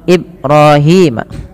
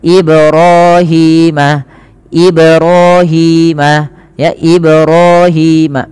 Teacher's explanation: Kemudian teman-teman pada lafal Ibrahim, pantulkan pada lafal mim, pada lafal ba yang dia berharokat sukun, ia dipantulkan, dan ini bacaannya kita kenal dengan bacaan qalqalah